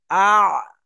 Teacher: আইনের মাখরাজ হলাকের বা কণ্ঠনালীর মাঝখান হতে উচ্চারণ হয়। তাহলে শুরু থেকে আপনি হামজা জবর নিয়ে আসেন আর আইনকে সাকিন করে দেন।